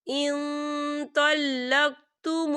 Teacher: نون ساکن کی آواز کو ناک میں چھپائیں گے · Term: اکفا